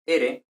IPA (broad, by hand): ɾ